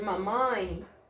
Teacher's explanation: nasal e a dinâmica produção é essa minha o bolo abaixa o som passa pela boca e passa pelo nariz · ela se divide em duas uma partida pela boca e aí a minha úvula abaixa e libera a passagem da corrente de ar de uma parte da corrente de ar pelo nariz só poder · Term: som nasal